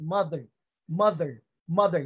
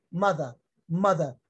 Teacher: The letter R disappears. Okay, it's not that pronounced.